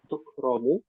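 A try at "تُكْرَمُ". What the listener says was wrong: Hidup hurufnya. Kafnya hidup.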